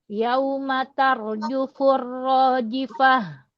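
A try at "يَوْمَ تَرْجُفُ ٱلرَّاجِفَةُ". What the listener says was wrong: Roji, ji, kuatkan jimnya. Rojifah.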